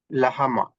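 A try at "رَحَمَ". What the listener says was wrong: మొదటి లెటర్ ఏం చదివారు మీరు? రహమా.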